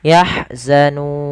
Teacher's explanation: alirkan nafas ketika melafalkan ha